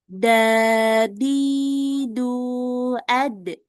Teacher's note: Sekarang kita masuk ke huruf dal. Ya, ingat kalau huruf dal pangkal lidahnya diturunkan dan dia mantulnya tipis.